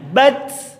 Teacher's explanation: Kemudian di akhir tak sukun ada desisnya.